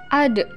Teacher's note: dalam keadaan mati huruf da terdengar suaranya memantul